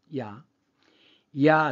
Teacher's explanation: 야를 길게 발음해 보세요. 야, 뭐가 남아요? 아가 남죠. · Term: 이중 모음